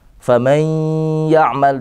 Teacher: di situ ada tasydid beserta gunnah.